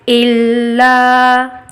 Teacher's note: لام پہ تشدید ہے، لام کی آواز دو بار آئے گی، ایک بار حمزہ سے ملاتے ہوئے ال، اور دوسری بار لا حرف مدہ الا۔